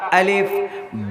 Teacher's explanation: الف کا مخرج جوف دہن یعنی منہ کا خالی حصہ، الف ایسے نکلتا، الف۔